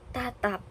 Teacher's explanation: bunyi hambatnya diucapkan tanpa letupan kuat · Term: pelepasan